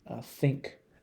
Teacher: if you say like the th in think there is no vibration in your vocal cords